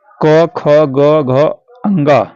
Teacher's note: क वर्ग जो है क ख ग घ अंग यह जो आता है कंठ से बोला जाता है ठीक इसका उच्चारण स्थान क्या है कंठ है तो यहां पर